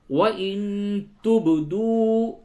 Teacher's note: وَإِن تُبْدُوا نون ساکن کے بعد تا اخفا کیجئے. اب با پہ قلقلہ کیجئے